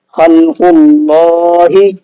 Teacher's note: تو یہاں پر بھی دیکھیے وہی سیم قاعدہ ہے، لفظ اللہ کے لام سے پہلے قاف پر پیش ہے، اس پیش کی وجہ سے ہم نے اللہ کے نام کو منہ بھر کے پڑھا ہے۔